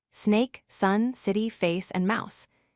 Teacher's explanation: the S sound is like a hiss with no throat vibration.